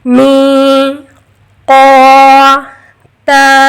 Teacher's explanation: تینوں کی آواز کو برابر مقدار میں کھینچیں گے، می، قو، تا، قو موٹا پڑھنا ہے، می قو تا، کان می قو تا، ان یوم الفصل کان میقاتا۔ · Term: حرف مدہ